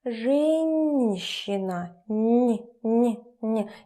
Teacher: hard consonants followed by soft consonants become soft themselves